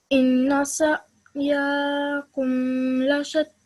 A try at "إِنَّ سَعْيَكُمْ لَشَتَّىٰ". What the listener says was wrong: Okay, just be careful. You stretch the ya out for a bit too long. Ya has a simple fatha, so ya.